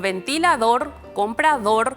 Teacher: ambas suenan fuerte en la última sílaba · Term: palabras agudas